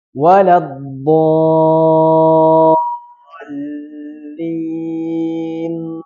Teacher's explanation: Donnya panjang enam harakat. Bukan tasdidnya yang enam harakat tapi madnya. Madnya yang enam harakat. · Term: mad lazim kalimi mutsaqqal